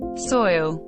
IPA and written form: sɔɪl (Soil)